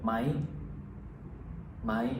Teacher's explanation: Then the second part ไหม ไหม is an upward rising tone.